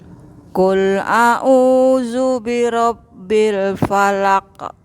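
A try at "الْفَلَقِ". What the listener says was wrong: Agak dimanyunin Ibu. Falaqo. Bukan falake, tapi falaqo. No, itulah falaqo.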